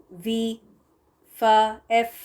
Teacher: تو وی کو پروناؤنس کرتے وقت یا ایف کو یا فا جو تھا ہمارا مخرج وہ یہ تھا کہ اوپر کے دو دانت جو ہے نا وہ نیچے کے ہونٹوں کے تر حصے کو لگیں گے